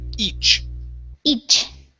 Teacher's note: remember the CH, this is a hard sound. We're going to stop the air.